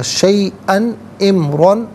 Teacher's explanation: تو یہاں تنوین کو اظہار کے ساتھ پڑھیں گے، یعنی یہاں پر غنہ یا اخفا نہیں کیا جائے گا۔ شیئن امرن، را پر دو زبر کی تنوین پر کر کے پڑھیں گے، اور وقف کی صورت میں بھی جب الف سے چینج ہوگی تنوین تو تب بھی را کو پر کر کے پڑھا جائے گا۔